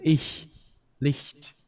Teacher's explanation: The palatal unvoiced fricative